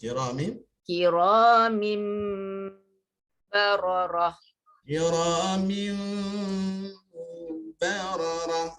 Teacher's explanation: Mim itu dirapatkan ya, cuma rapat dia dengan khafif, dengan ringan. Okey, kalau rapat dengan sempurna dia dah jadi mim betul lah ya. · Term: ikhfa